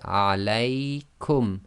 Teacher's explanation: Now the second bit, the lam with the ya, and you can see the sukoon, this is the sukoon in the Uthmani script, and we've got the fatha on the lam, so this is a diphthong. So the lay sound is a diphthong. You must say that of a length 2 relative to length 1.